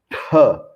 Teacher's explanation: O segundo é o T de tatu, Mahaprana, T, com muito ar saindo.